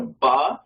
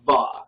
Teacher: like uh even in modern hebrew it has two pronunciations one of them is like a regular b like a ba and the other one is like a va like a b where your uh where your lip is under your top teeth